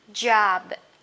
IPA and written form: dʒɒb (job)